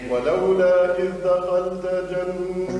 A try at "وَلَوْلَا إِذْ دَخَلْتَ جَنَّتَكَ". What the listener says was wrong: دخلت صار التمطيط ولولا ولولا ركز